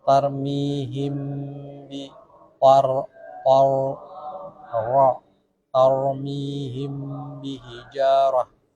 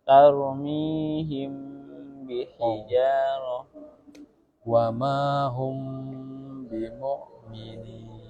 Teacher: mim sukun diikhfahkan dengan guna apabila setelahnya ada satu huruf ba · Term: ikhfa syafawi